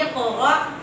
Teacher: الف کے اوپر جزم آ گئی، ادھر پھر ہم نے جھٹکا لگانا ہے